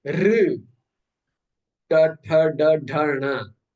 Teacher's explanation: Your tongue is turning like this. Your tongue is turning upwards, and then the tip of the tongue is touching the roof of the mouth. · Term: murdha